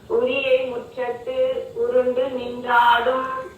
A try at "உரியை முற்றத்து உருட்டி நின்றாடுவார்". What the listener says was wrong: உருண்டல்லம்மா உருட்டி. உரியை முற்றத்து உருட்டி நின்றாடுவார்.